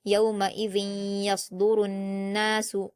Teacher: नून मुशद्द को गुना के साथ पढ़ा जाएगा